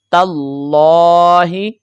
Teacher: اس میں جلالت اللہ کا لام ہے اور اس سے پہلے حرف پر زبر آ گیا، تو اس صورت میں ہم یہ لام کو پر پڑھیں گے